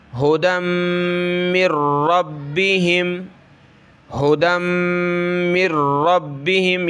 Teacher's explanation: اولئک اولئک، علی، عین زبر ع، لام کھڑا زبر لا، ٹھیک ہے، علی، اولئک علی ہدم، دیکھیں میم کے اوپر یہ تشدید آ گئی تو یہاں ہم نے ناک میں آواز چھپانی ہے